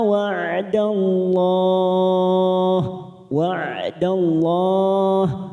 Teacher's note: Lam jalalah kita baca tafkhim karena sebelumnya fathah · Dallah karena kita waqaf di sini kita panjangkan 4 harokat.